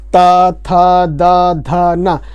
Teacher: अब बोलिए त थ द ध न, जो आप देखेंगे कि जो आपकी जबान है, जब सारे व्यंजन बोलेंगे आप त थ द ध न, तो आपकी जबान दांत में जरूर लगेगी, जाकर नेसेसरी है, लगेगी, इसीलिए इसे दंत व्यंजन बोले जाते हैं।